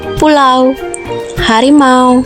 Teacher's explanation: diftong naik menutup mundur, au